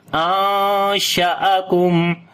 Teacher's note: On the noon we make a ikhfa sound, like we hide the sound of noon into our nose, and also we long 1 alif.